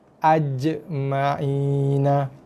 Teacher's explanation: Bunyi qalqalah dia bunyi ketat sikit, ada tekanan. Tekan sikit pada makhrajnya. Ujung tengah lidah tekan pada langit atas.